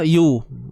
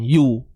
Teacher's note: Muncul bibir tak? Muncul lah. Sebab dia baris depan.